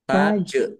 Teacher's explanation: Tajri jim sukun ya bacaan dibaca memantul